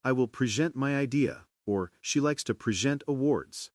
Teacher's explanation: stressing the second syllable, it becomes a verb, meaning to show or give something.